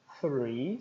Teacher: porque precisa ter os dois dentes da frente para pronunciar né o som interdental a língua entre os dentes